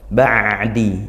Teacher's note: dia makhraj Ain dari tengah tenggorokan